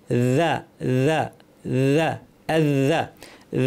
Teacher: যা যেন আওয়াজ শোনা যায়, জিহ্বা মাথাটাকে উপরের দাঁতের শীর্ষে লাগিয়ে